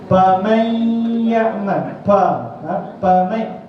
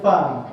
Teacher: Fa, ujung bibir bawah, perut di bawah kena pada hujung gigi atas.